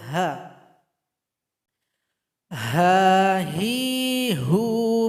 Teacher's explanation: huruf H tempat keluarnya berasal dari tenggorokan paling bawah dekat dengan huruf hamzah bunyinya seperti orang mengeluh h Hai jadi ha besar kemudian sifat · sifat dari huruf H ini adalah Hamas ada nafas atau angin yang keluar ketika kita membacanya